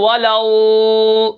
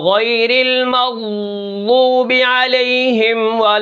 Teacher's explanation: ضاد کو جب آپ ادا کرتے ہیں تو یہ آواز اس کے مخرج میں دراز ہوتی ہے، لمبی ہوتی ہے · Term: استطالت